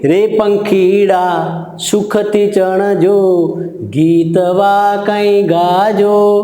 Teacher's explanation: અહીંયા રે પંખીડામાં અટક્યા, સુખથી ચણજો એમાં અટક્યા ને પછી છેલ્લે અટક્યા. તો આ જે અટક સ્થાન છે એને આપણે યતિ કહેશું.